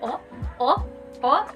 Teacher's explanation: it is a closed mid back vowel or rounded vowel